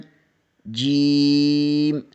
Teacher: وسط زبان بالمقابل اوپر کے تالو سے لگے تو جیم ادا ہوتا ہے